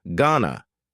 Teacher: Going to is generally pronounced with a schwa.